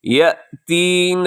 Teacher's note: یہاں حمزہ ہے یا کے بعد، تو اسے جھٹکے سے بولیں گے